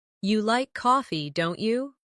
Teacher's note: making your voice rise slightly at the end of the tag question